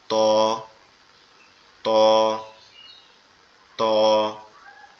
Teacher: জিহ্বার আগা উপরের দুই দাঁতের গোড়ার সঙ্গে লাগবে, লেগে উচ্চারিত হবে ত, ত, ত,